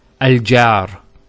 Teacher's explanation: notice the sound beginning al which in english is called a glottal stop